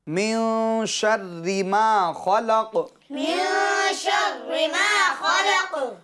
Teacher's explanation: قاف کے اندر قلقلہ اس کو خوب ظاہر کر کے پڑھیں گے یعنی قلقلہ خوب ظاہر ہوگا آواز لوٹے گی. اور نے کہا کہ قاف کی جو حرکت ہے زبر اس کو سکون یعنی وقف میں جزم میں بدل دیں گے.